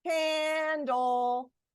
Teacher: I said both syllables with the same amount of time and the same amount of force. So do not over enunciate both syllables like that.